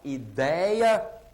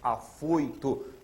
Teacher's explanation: Então, aqui nós temos os ditongos ei, eu e oi, ou seja, tem um som fechado, não tem um som aberto, estridente.